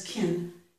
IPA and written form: kɪn (can)